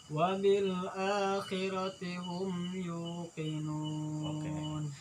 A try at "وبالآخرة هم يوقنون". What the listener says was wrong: Jangan yuqinun, wah itu terlalu berat ya. Sakon.